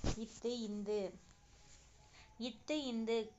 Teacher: நாவினுடைய நுனி மேல்வாய் பல்லினுடைய அடிப்பகுதியை தொடுவதால் பிறக்கின்றன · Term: இன எழுத்துக்கள்